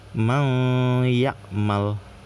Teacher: Jadi didengungin gitu ya, ditahan dulu